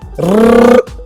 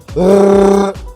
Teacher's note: Repeatedly flapping your tongue results in a trill, like the Spanish alveolar trill rrr, or the French uvular trill rrr.